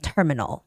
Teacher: have we use the same word terminal in Korean so terminal make sure that you keep the first syllable stress